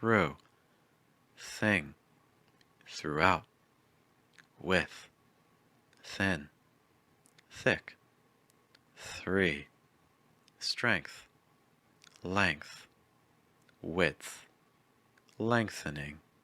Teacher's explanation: the tip of your tongue will make contact with either your top front tooth or your bottom front tooth. This time there will be no vibration. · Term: TH that's voiceless